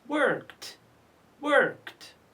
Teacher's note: The next one, ed is preceded by k, k sound. Is k voiceless or voiced? It is voiceless, So we pronounce it worked, worked.